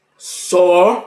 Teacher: Veja que nho cai. E o só fica intermediário. E o zi sobe. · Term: sílaba tônica